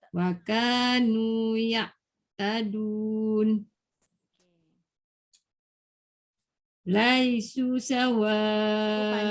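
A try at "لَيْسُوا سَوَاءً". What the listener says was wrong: Panjang. Su tu kenapa pendek? Sebab dia ada waw. Laisu sawa'a.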